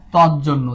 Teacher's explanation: বর্গীয় জ খণ্ডত্বের উপরে প্রভাব বিস্তার করলো, করে সমান হয়ে গেল। এটা হচ্ছে শেষের ধ্বনির প্রভাবে আগের ধ্বনি পরিবর্তন হয়ে যাওয়া। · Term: পরাগত